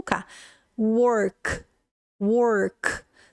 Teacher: O som do K, ele é um som que ele não tem vibração nas suas cordas vocais. Então, se você colocar sua mãozinha aqui, ó, bem na sua corda vocal e pronunciar o K, é o som, não é K, né?